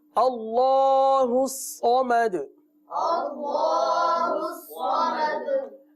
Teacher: جی ہاں صاد کو پر پڑھیں گے، آخر میں قلقلہ کریں گے